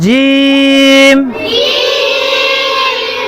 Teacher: জিহ্বার মধ্য থেকে লাগিয়ে শক্ত করে উচ্চারণ করব >> জিম জিমটাকে চার আলিফ টান দেব।